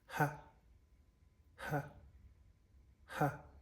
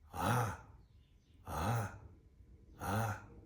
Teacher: the sound H for the voiceless ha ha ha and for the slack voice is ah ah ah